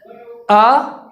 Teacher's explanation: شروع حلق سے حمزہ ادا ہوتا ہے۔ تو ہمیں جو آواز نکالنی ہے وہ شروع حلق سے یعنی سینے کی جانب سے سب سے پہلے آواز نکالنی ہے، اور یہاں سے آواز کو اٹھانے کے بعد پھر ہم اپنی آواز کو بیچ حلق میں لائیں گے، یعنی آئین ادا کریں گے۔